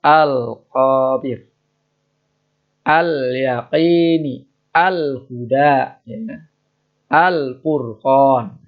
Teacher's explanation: yaitu lamnya dibaca jelas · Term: lam komariah